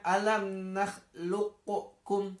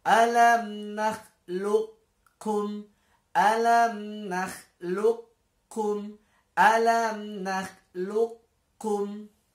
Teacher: Jadi dibacanya bukan alam nakhluqukum, tidak perlu. Tapi qafnya dimasukkan ke dalam kaf, namun qafnya itu bekasnya masih ada. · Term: idgham mutaqaribain